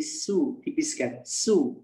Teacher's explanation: Kalau so sifatnya itbaq dan juga isti'lah ya, jadi menebal, menguat. Sedangkan kalau sa menipis.